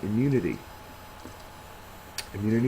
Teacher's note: It's got the second syllable accented